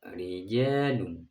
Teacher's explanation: Ro dibaca tipis dinamakan tarkik.